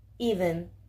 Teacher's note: es una vocal cerrada delantera que se emite sin redondear los labios su ortografía más común es e como en la palabra even